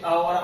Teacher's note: जो हमारे कंठ है ना तो वहां से अ और आ की जो ध्वनियां है वो हमारे कंठ से निकलती है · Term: कंठ स्वर